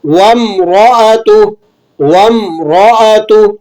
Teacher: ہا کو آپ نے ملا کر پڑھتے ہوئے کھینچ کر ادا کرنا ہے کیونکہ کھڑا زبر ہے، 1 الف کے برابر کھینچ لیں گے۔